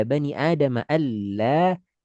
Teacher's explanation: kaitan suara semua kita arahkan ke mulut tanpa ada yang belok atau nyangkut barang sedikit pun ke hidung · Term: ain tanpa ke hidung